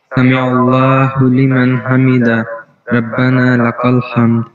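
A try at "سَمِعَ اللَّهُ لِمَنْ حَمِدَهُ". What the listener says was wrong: سمع اللہ لمن حمیدہ، حمیدہ میں ہا ہے، اس کو کلیئر کریں. اللہ، یہاں سمع اللہ میں جو ہا ہے وہ چیسٹ والا ہے، اور حمیدہ میں جو ہے وہ ہا حلق والی ہے.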